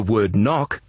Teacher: in the word knock, you don't hear the K at the beginning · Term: silent letter